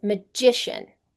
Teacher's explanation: Magic, the stress is in the first syllable. Magician, the stress is in the second.